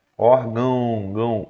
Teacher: você vai ver que o seu nariz ele vibra, porque obviamente é uma passagem de ar aqui para a produção do som nasal